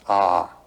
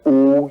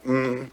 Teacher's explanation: It's written a U m. You start in the back of the mouth. Ah, and then u you fill the mouth and m closes at the mouth.